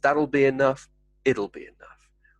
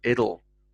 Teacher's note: said quite quickly in the sentence that'll be enough it'll be enough with more of a soft d sound